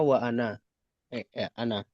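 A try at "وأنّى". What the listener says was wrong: Nunnya tasydid ya wa anna.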